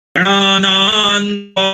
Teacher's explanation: ये यहां पर दो तरह के नासिकाएं हैं, गणानान्त्वा। पहला जो है वो मूर्धन्य न है और दूसरा दंत न है